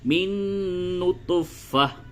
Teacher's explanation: وقف کریں گے تو یہ جو تا ہے اس کو ہا سے بدل دیں گے، کیونکہ یہ ہا کے شکل کی تا ہے، تو یوں ہوگا من نطفہ۔